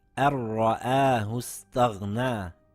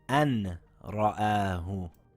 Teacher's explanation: Or in this verse, we see a Noon sakin followed by a yarmalun letter. We drop the Noon without holding the sound because it's a Ra. The verse now reads أَرْرَآهُ اسْتَغْنَى and not أَنْ رَآهُ.